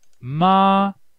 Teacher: contoured tones for example tone four starts at high and ends at low so it has a contour